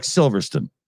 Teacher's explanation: you guys can't even bother pronouncing the word Stone it just kind of falls off